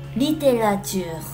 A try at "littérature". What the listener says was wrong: Il faut mieux prononcer. Litté. Rature. Alors, et le E, on enlève un tout petit peu. Littérature.